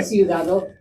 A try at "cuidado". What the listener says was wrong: No, cuidado. Cuidado. So that caution for city and caution, the UI are flipped. So city is ciudad. Caution is cuidado. And there's that hard C sound, just like how we would have, think like cumin, like the seasoning cumin, cuidado. So that C carries the same pronunciation there.